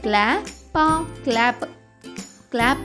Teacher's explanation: C L యొక్క శబ్దం క ల కాకుండా క్ల అవుతుంది కాబట్టి సి ఎల్ ఏ యొక్క శబ్దం అవుతుంది క్లా సి ఎల్ ఏ